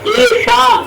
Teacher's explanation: ಶಾ ಮೂರ್ಧನ್ಯ ಶಕಾರ, ತಾಲುವೆ ಶಕಾರ ಅಲ್ಲ. ಈಶ ಬೇರೆ, ಈಶಾ ಬೇರೆ.